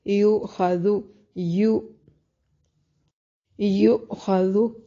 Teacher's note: یا کو جھٹکے سے ادا کریں گے، خا کو موٹا ادا کریں گے، زال کو نرم